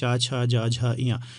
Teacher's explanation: तो आपकी जीभ जो है ये तालु को टच करेगी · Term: तालव्य